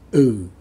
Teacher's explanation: you might say the word um with a down tone